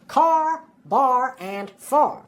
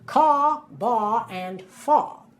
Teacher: you could hear that R sound on the end right